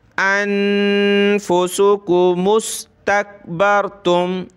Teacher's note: नून पे हमने इख्फा करना है, नाक में आवाज़ पैदा करेंगे और इस मीम को हमने सीन के साथ मिलाना है। मुस